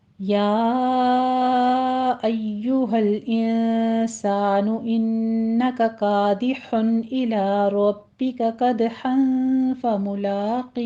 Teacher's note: या में मद्दे मुनफसिल जायज़ है, 4 काउंट करेंगे।